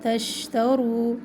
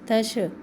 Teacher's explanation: شین میں پھیلنے کی صفت ہے. آواز میں اگر کمی لے کے آئیں گے تو پھر اس میں جھٹکا سا پیدا ہوگا تو جھٹکا نہ پیدا کرے.